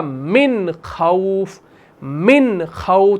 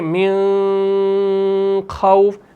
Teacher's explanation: नून को जाहिर करना है। नून को छिपाना नहीं है। नून को खींचना नहीं है। इसमें इखवा भी आप नहीं करेंगे। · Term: इज़हार